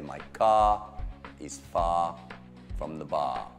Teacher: Questo è un suono troppo importante in inglese perché l'R quando è l'ultima lettera non c'è. Quindi la mia macchina è lontano dal bar, sarebbe my car is far from the bar.